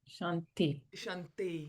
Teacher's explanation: In Sanskrit, the t is either behind the teeth like that th, which is the shanti, or it's up in the third position, which is ka, which is very unusual for us English speakers. So shanti it's kind of soft, feminine, dental sound.